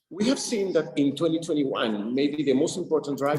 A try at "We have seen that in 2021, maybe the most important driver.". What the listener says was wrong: 2021, right? Sounds like you're saying Juan, like someone, like a guy named Juan, instead of one, right? Juan, right? You hear so much attention you put on Juan. One. Lips are totally out of the equation.